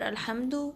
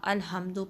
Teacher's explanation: یہ وسط الحلق سے نکلتی ہے ہا، یعنی کہ middle part of دا throat سے، اور جو سیکنڈ ورڈ لکھا ہے الحمد، یہ ہا اکسل حلق سے نکلتی ہے، اس کا مخرج اکسل حلق ہے، یعنی کہ deep part of دا throat.